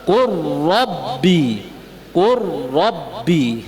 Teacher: Hukumnya diidghamkan, tidak boleh dibaca wa qul rabbi zidni ilma.